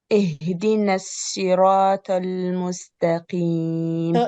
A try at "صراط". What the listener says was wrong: صراط tal is ta. Make it heavier. No. Tal is ta. All the word is heavy. The sad, ra, and ta. So the problem in the ta, you said it tal. Tal is ta. I need a ta. Like shaitani, so ta, tal.